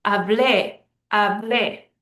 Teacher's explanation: the last syllable is stressed, not the second to last. So it's breaking the rule.